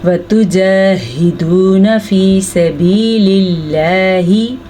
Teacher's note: लफ्ज़ अल्लाह को बारीक पढ़ेंगे क्योंकि उससे पहले ज़ेर है